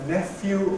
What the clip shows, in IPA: ˈnefjuː